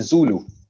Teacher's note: जू को लंबा खींचेंगे और लू को छोटा रखेंगे